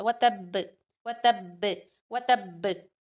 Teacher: शद होगी तो जब इस पर वफ करेंगे तो हम शद नहीं पढ़ेंगे बल्कि साकिन पढ़ेंगे तो शद की वजह से शिद्दत के साथ कलकला होगा।